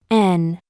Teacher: Y para el caso de la N, que también es un sonido nasal, se bloqueará la salida de aire por la boca, colocando la punta de la lengua entre la parte trasera de los dientes superiores y el paladar, haciendo con esto que el aire sea expulsado por la nariz. Y a diferencia de la M, esta se pronuncia con los labios ligeramente separados, mientras se produce el sonido.